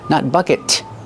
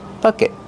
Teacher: Stop the air with your tongue. Make a stop T.